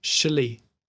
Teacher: It's ak, sh, li. And the final two syllables are really close together.